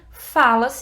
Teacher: tem o presente aqui fala e a sílaba tônica é o fá